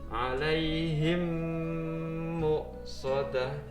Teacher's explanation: Cara membacanya adalah dengan memasukkan suara huruf mim mati ke dalam huruf mim setelahnya yang disertai dengan mendengung. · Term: idgham mimi